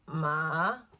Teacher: The third tone is referred to as a dipping tone. So, but I like to call it the zombie tone because it's kind of like you're moaning, like you're using, it's coming from your throat.